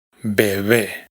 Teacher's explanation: Por ejemplo, en una palabra como esta no pronunciamos bebé, sino bebé. Fijaos en que la segunda B es mucho más suave que la primera.